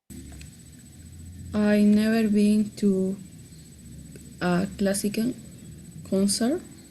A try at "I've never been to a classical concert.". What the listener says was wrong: Don't forget to pronounce the contraction. I've.